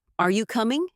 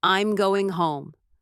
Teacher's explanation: Questions typically rise at the end. Are you coming? While statements fall.